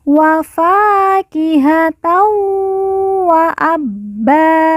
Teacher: Tan bertemu dengan huruf wawu, maka tanwin dileburkan, langsung masuk huruf wawu, kemudian ditekan, ditahan 2 harokat dan didengungkan.